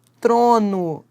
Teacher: eu tenho t seguido do R, encontro consonantal. As duas consoantes são pronunciadas.